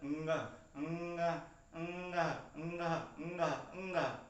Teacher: अनुस्वार जो है आपका नासिका से बोलता है